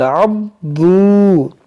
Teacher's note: आइन को अदा करेंगे सही से, हलक से